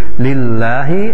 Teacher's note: lafaz Allahnya kembali dibaca dengan bacaan tarqiq, yaitu tipis. Lillahi, lafaz Allahnya la-nya termasuk hukum tabi'i.